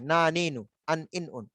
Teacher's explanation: নুনটা কিন্তু লাগে উঁচা অংশে, তালুতে, একদম তালুতে উঁচা অংশে